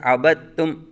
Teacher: عبدتم میں دال کو تا میں ملایا گیا ہے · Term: مدغم